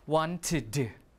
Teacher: Because it's hard to pronounce wanted, like that, right? So you add in a light vowel, as in the I or the schwa, so you have ud or id